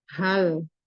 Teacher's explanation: Jadi tidak tebal karena dia termasuk istifal, huruf H.